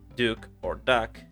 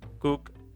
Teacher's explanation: the substitution of a sound produced in the front of the mouth, like D or N, with a sound produced in the back of the mouth, like K or G. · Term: backing